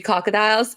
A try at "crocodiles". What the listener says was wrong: the first time you did not put that first R in there